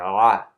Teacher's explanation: So the letter ayn comes from the middle part of the throat. We're capturing the air and pronouncing ah.